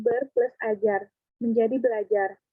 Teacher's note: Umpamanya, dalam pengimbuan prefiks ber pada dasar ajar, terjadi perubahan bunyi di mana fonem R berubah menjadi fonem L. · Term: Perubahan fonem